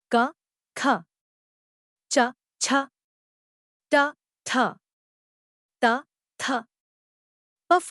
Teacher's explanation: उच्चारण के समय स्वर तंत्र यां परस्पर दूर रहती हैं और जिनके उच्चारण में मुख तक आने वाली वायु में कोई कंपन नहीं होता उन्हें अघोष कहा जाता है हिंदी वर्णमाला के सभी वर्गों के पहले दो व्यंजन अघोष माने